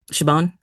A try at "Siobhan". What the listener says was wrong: Siobhan. Siobhan. V, the B is pronounced like a V. Siobhan.